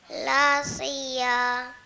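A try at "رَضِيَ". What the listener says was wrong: Bukan la tu, ra. Radiya.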